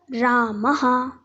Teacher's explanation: त्या विसर्गांचा उच्चारही कुठून होतो, तर कंठामधून होतो